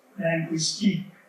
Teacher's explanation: stresses on the last syllable